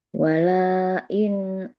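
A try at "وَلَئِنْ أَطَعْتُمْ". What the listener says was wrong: Jangan panjang lahnya. Wala in ata'tum.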